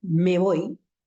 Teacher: fíjense ustedes que es como si hubiese producido una sola palabra